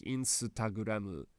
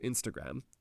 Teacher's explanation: we have this u at the end of M or G, for example, because just an M on its own doesn't exist. So it needs to be with something, and u is the least obtrusive vowel, so we add that in to make it look like Japanese.